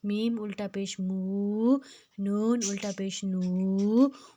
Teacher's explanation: میم کو ہم نے ناک سے نہیں ادا کرنا، نہ ہی ہم نے نون کو ناک سے ادا کرنا ہے،